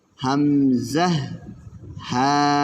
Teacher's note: এক নাম্বার মাখরাজ হলকের শুরু হইতে হামজাহ হা